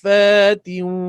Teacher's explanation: Saf mesti 6 harakat sebab berjumpa dengan sabdu. Itu dia panggil mad lazim kalimi.